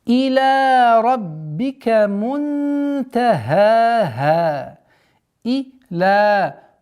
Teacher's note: Долгота в размере двух огласовок фатхи